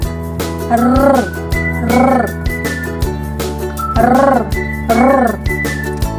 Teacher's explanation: ang hangin ay ilang ulit na hinaharang at pinapabayaang lumabas sa pamamagitan ng ilang beses na paglapag ng dulo ng nakaarkong dila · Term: pakatal